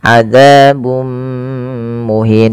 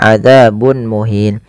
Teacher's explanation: dengan mim yang ini kita namakan dengan bacaan Idam bunah yaitu cara membacanya memasukkan tanwinnya kepada mim dan ditahan